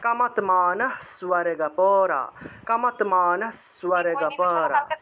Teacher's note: এই যে কামাত্মানঃ বলার সাথে সাথে দন্তস্বটাকে ধরতে হবে , কামাত্মানঃ স্বর্গপরা, কামাত্মানঃ স্বর্গপরা, কামাত্মানঃ স্বর্গপরা, দন্তস্বয়ের সাথে বফলা থাকায়